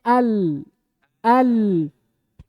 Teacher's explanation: kalau lam terbuka tapi tidak sempurna makanya dikatakan sifatnya tawassut